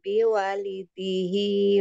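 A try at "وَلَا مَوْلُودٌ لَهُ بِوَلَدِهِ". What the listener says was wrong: biwala bukan biwali ya waladihi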